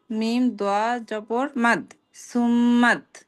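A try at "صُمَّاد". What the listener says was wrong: আপুর সা উচ্চারণ আরো পাতলা হবে। সুম সুম্মাদ।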